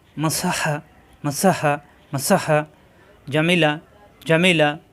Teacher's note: মিম অক্ষর দুই ঠোট থেকে উচ্চারণ করতে হয় মিলানো ঠোট ছেড়ে দিয়ে আবার মিলালেই হয়ে যায়